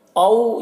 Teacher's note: او یہاں پر واو لین ہے، اس واو لین کو نرم آواز کے ساتھ جلد پڑھنا ہے